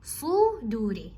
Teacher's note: Why? Because slad is heavy with the dhamma, while dal is light with the dhamma